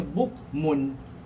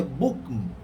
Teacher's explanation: Kat sini baris hadapan, kalau kita sambungkan bukmun disambung ada bunyi nun. Tapi kalau kita waqafkan, kita tak baca bukmun, kita baca bukm. Tak bunyi dah bunyi nun tadi.